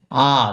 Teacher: আ যখন আমরা উচ্চারণ করতে করি তখন কিন্তু মুখ খুলে আ যতটুকু খোলা যায় ততটুকু খুলে আমরা আটা উচ্চারণ করি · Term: বিবৃত